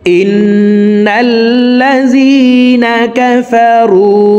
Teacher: তো এখানে দেখুন হরকতের বামে নুনের উপরে তাসদিদ আছে, এই কারণে এই হামজা তাসদিদওয়ালা নুনের সাথে 3 সেকেন্ড পরিমাণ গুন্নাহ করে ধরে রেখে পড়ব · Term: ওয়াজিব গুন্নাহ